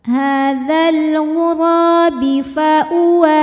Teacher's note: kalau diteruskan, ra ini hukumnya cukup mad tabi'i saja karena ada alif didahului fathah ya